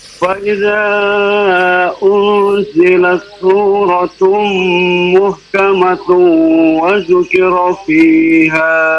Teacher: tanwin ya ketemu dengan waw ya, hukumnya adalah idgham bi gunna ya, ditahan terlebih dahulu.